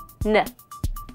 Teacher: To make the sound n, place your tongue against the upper ridge of your mouth, behind your teeth, and hold it there. Make a voiced sound and release the air through your nose. N.